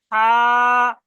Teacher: যার নোক্তা নেই সেটাকে বলবো কি, হা, পুরো গলার মাঝখান দিয়ে হা, গলার মাঝখান দিয়ে